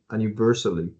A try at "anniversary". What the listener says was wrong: do instead of Annie, do schwa, Anna.